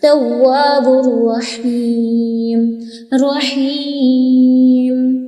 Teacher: را کو منہ بھر کے پڑھنا ہے، ہا کو اچھے سے حلق سے ادا کرنا ہے